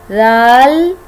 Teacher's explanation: बिल्कुल buzzing sound नहीं आएगा इसके अंदर। ज़बान की टिप हमारी अपर टू फ्रंट टीथ के एज से टच होगी तो दाल बोला जाएगा।